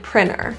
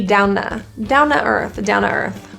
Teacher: In English, the N and T together, something strange happens there. When we have an N and a T, sometimes that T, we drop it altogether. So a word like printer might sound like printer.